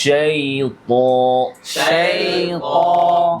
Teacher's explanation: ইয়াতে লিন এবং রখাওয়া আওয়াজ জারি